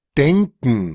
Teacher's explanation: Es una pronunciación en donde se elimina la K. Nótese que la K no se va a pronunciar y se reemplaza por un glottal stop. Es decir, ese sonido que es como hacer algo como así, y cortar el paso de la respiración.